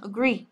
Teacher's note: trọng âm của nó sẽ ra âm thứ hai